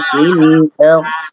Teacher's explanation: fil ardh itu huruf dhad dan istiqalah daripada huruf dhadnya jangan sampai hilang